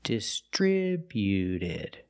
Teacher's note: When we add ed, the T at the end is between vowels, so it's a fast D.